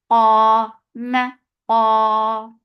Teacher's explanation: Ma for fatha upon jaws. Keep meme light, but qaf will be heavy. Qa, ma, qa, two counts long.